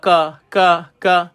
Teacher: Kaf ini huruf dia tidak terangkat lidah ka ka ka dia huruf istifal nama dia tuan-tuan ha bu